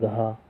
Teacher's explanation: घ का उच्चारण स्थान कंठ